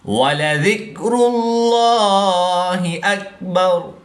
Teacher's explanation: وقف کی حالت میں را کی پیش کو بھی ساکن کر کے پڑھیں گے۔